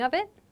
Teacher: I'll give some examples in a moment. With of it, the two kind of connect. They make a V sound.